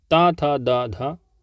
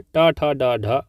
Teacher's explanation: ता था दा धा दंत ध्वनि है, टा ठा डा ढा मूर्धन्य ध्वनि है